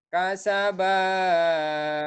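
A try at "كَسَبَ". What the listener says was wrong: Kasaba. Panjang panjang ting madnya. Kasaba. Jangan panjang-panjang.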